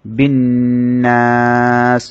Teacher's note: বিরাব্বিন নাস, রর মধ্যে জবর হওয়ার কারণে র মোটা করে পড়তে হবে। বিন্নাস, নুনের মধ্যে তাসদীদ হওয়ার কারণে ওয়াজিব গুন্না হবে এবং সাথে সাথে 3 আলিফ টানতে হবে